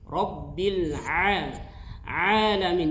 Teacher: Karena dia bukan huruf yang memiliki sifat tebal. Jadi dia tidak tebal. Hurufnya tipis, huruf ain itu.